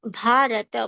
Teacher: bha is a mahapran sound requiring more breath and more strength